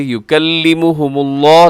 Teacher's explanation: لفظ اللہ کو یہاں خوب موٹا کر کے پڑھیے گا